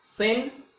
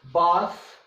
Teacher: Okay, the tip of tongue is placed behind the upper front teeth when these sounds are produced. The initial sounds of thin and the final sounds of bath are both voiceless dentals. The symbol used for this sound is th, usually referred to as theta.